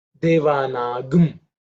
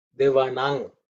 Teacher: in the Ka Varga, the Anuswara takes on the word ng